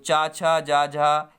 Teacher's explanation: ये जब आप जिह्वा जब टकराती है ऊपर वाले भाग पर, इसीलिए इनको तालब्य व्यंजन बोला जाता है।